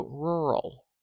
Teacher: do you hear how that a is represented by a very weak sound